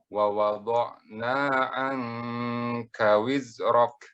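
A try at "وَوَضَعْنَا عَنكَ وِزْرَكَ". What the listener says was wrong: Ainnya kurang. Wa wada'na anka wizrak. Ya, qafnya karena dia sub isti'la, nunnya jadi tebal. Itu pernah kita pelajari nun yang tebal. Kalau ada huruf isti'la atau huruf itbaq, maka dia ditebalkan nun sukunnya.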